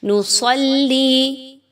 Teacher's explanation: صاد حروف مستعلیہ پر پڑھی جائے گی، یعنی موٹی کر کے صاد تخفیم کے ساتھ پڑھی جائے گی